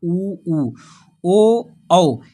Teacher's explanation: तो व्रत बन रहा है हमारे ओठों में, इसीलिए इन्हें व्रतमुखी स्वर कहते हैं। · ऊ बोलेंगे आप तो आपका ओंठ जो है गोलाकार हो जाएगा, इसी को व्रत टाइप बन जाएगा।